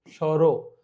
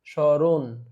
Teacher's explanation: এই যে র এর সাথে থাকা অ ধ্বনিটি সংবৃত হয়ে র ওকার হয়ে যায়, কারণ র এর উচ্চারণ তখন অ এর উচ্চারণ ও এর মতো হয়, এই জন্য হয়ে যাবে স র ওকার রো, স রো।